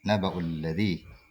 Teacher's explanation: Alladhi ini huruf ya, ya sukun sebelumnya di kasrah. Maka hukumnya adalah mad tabi'i. Ya, mad tabi'i. Panjangnya 2 harokat.